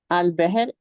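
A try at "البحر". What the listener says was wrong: बाहर होता है, बहर नहीं होता।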